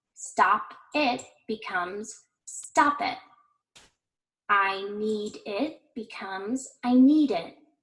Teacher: a word that starts with a vowel sound this speaker should push that consonant sound forward and connect it to the vowel in the next word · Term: consonant plus vowel